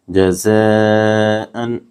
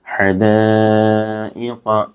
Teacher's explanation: हरूफ मद्दा के बाद हमज़ा इसी कलमे में इसलिए मद्दे मुत्तसिल होगा, यहाँ एक अलिफ से ज़ायद खींच कर अदा करना चाहिए